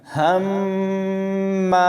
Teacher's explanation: ہا میم زبر ہم، میم الف زبر ما، ہم ما۔ ہا کو میم کے ساتھ ملاتے ہوئے میم پڑھا، اور پھر دوبارہ میم کو الف کے ساتھ ملایا، تو اس طرح مشدد حرف 2 بار پڑھا گیا اور ملاتے ہوئے غنہ کیا گیا، یعنی 2 سیکنڈ تک آواز کو ناک سے پڑھا گیا۔